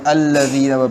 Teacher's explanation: یہاں پہ لام باریک ہے، الذین پڑھا جائے گا، پر نہیں پڑھا جائے گا